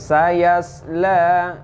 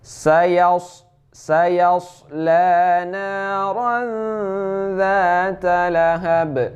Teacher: bukan sin ini, akan tapi sad ya. Kita baca harus tebal.